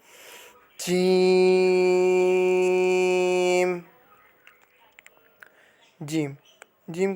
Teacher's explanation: جیم جیم جیم کو آپ نے 5 انگلیوں کے برابر لمبا کر کے پڑھنا ہے، یعنی جب آپ اپنے 5 انگلیوں کو کھول کر بند کریں اتنی مقدار جیم کو لمبا کرنا ہے۔ جیم جیم جو ہے زبان کے درمیان اور تالو کے درمیان سے ادا ہوتا ہے